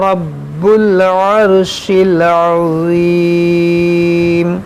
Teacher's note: یہ رب را کو موٹا پڑھیں گے اور یہ با پر مشدد ہے، با پر تشدید ہے تو اس کو پڑھیں گے دو بار جماعوں کے ساتھ.